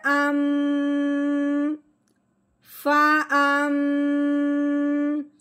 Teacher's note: जब भी ये शद मीम के ऊपर आ जाए तो उस मीम पे हमेशा गुन्ना करते हैं। तो मीम का गुन्ना कैसा होता है? मुंह बंद करके नाक में से आवाज निकालना।